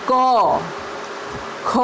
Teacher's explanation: ક કરતાં ખના ઉચ્ચારમાં નાદતંત્રીમાંથી હવા પસાર થાય છે. તે સાથે હવાનો જથ્થો નવો ધ્વનિ ઉત્પન્ન કરે છે. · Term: મહાપ્રાણ ધ્વનિ